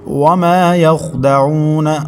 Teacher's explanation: وما واو متحرک، میم کے بعد الف مدہ، ایک الف تک کھینچیں گے۔ یخدعون، خوا حروف مستعلیہ میں سے ہے، موٹے حروف میں سے ہے، اس کو پر پڑھیں گے۔